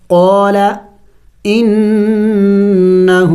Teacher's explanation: دیکھیں نون مشدد ہے، غنہ کریں گے، یعنی ناک میں آواز لے کے جائیں گے